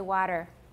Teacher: when t comes between two vowels it often turns into a tap